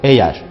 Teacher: Eğer kelimesinde yumuşak G Y'ye dönüşür